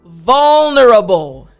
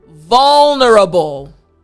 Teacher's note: That V, front teeth, bottom lip, and then the l sound.